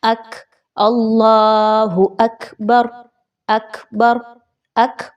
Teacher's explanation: آپ نے تھوڑا سا آخر میں ساؤنڈ پروڈیوس کرنا ہے جو جاری رہنے کی طرف آواز لگے کہ آواز جاری ہے، لیکن پھر آپ نے روک دینی ہے۔ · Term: حمز کی خوبی